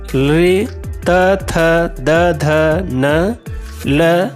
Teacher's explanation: लृ, त, थ, द, ध, न, ल और दंत शकार का उच्चारण स्थान दंत होता है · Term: दंत्य वर्ण